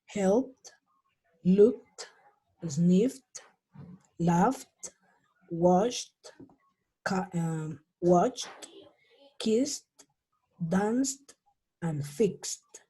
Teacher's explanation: Esa ed se va a pronunciar como si fuera una T.